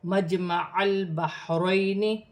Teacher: یا ساکن سے پہلے زبر ہے تو یالین بنے گی، اسے کھینچا نہیں جائے گا